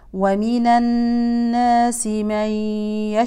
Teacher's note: الشين ساكنه نبين التفشي